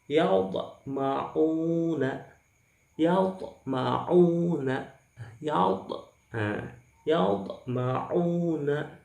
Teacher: pantulan tidak terlalu kuat, tidak terlalu keras, dan terletak di tengah-tengah kata atau kalimat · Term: sughra